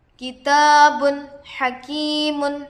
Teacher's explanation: کتاب حکیم، کاف پر زیر کی حرکت ہے، جلد پڑھے، الف سے پہلے زبر ہے، الف مدہ ہوگا، با پر دو پیش ہے، تنوین ہوگا، تنوین کے بعد حروف حلقی سے حا آ کر ہے، اس لیے نون کو ظاہر کر کے بغیر غنہ کے جلد پڑھیں گے، اس کو اظہار کہتے ہیں۔